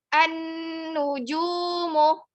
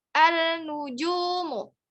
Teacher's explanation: Sebelah alif lamnya ada huruf syamsiyah, yaitu huruf nun yang bertasydid. Jadi, ucapkan dulu A-nya, langsung masuk ke huruf syamsiyahnya, huruf nun yang bertasydidnya. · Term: alif lam syamsiyah